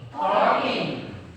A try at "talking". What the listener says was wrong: R-nya tidak boleh kedengaran. Talking.